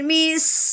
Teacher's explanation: اب ہم نے جزم والے حرف کو ساکن کہنے کے بعد کیا کرنا ہے کہ پچھلے والے حرف کو اس ساکن حرف کے ساتھ ملا دینا ہے، یعنی کہ اب ہم نے میم کو سین ساکن کے ساتھ ملانا ہے، سین کی آواز کی سیٹی آواز نکالتے ہوئے